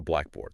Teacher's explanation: The emphasis is on black, not board